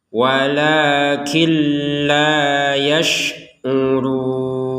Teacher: nunnya dimasukkan ke lam tanpa ada dengungan. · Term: idgham bila gunnah